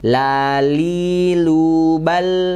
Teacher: Qomariah ya lamnya sukunnya dibaca jelas lamnya di mana makronya yaitu pinggir sampai ujung lidah menempel ke gusi atas ya dan lam ini sifatnya tipis